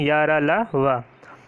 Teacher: अंतस्थ व्यंजन में आते हैं। इनका उच्चारण जो है जीभ, तालु, दांत और ओठों के परस्पर सटाने से होता है, किंतु कहीं भी पूर्ण स्पष्ट नहीं होगा। हम बोल कर भी देख सकते हैं या, तो कहीं भी पूर्ण स्पष्ट नहीं हो रहा है।